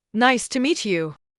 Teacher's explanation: For example, if you say nice to meet you with a flat, bored tone, it doesn't sound friendly. But if you say it with rising intonation on meet and a smile, it sounds warm and welcoming.